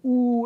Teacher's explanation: Oo is a high back rounded tense vowel.